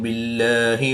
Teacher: اس میں جلالت اللہ عز و جل کے لام سے پہلے با کے نیچے زیر ہے تو اس لام کو پر نہیں بلکہ باریک ہی پڑھیں گے